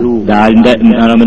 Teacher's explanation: നാവിന്റെ തലയും മേലെ മുൻപല്ലിന്റെ ഉള്ളിലത്തെ ഊനും തമ്മിൽ ടച്ചായി.